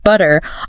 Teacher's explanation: And even individual sounds, like the T in the word butter, often ends up sounding more like a D to someone with a trained ear